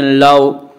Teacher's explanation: لاو، واو ساکن سے پہلے زبر ہے، واولین ہوا، اس لیے واولین کو نرم آواز کے ساتھ جلدی پڑھیں، تھوڑا بھی نہ کھینچیں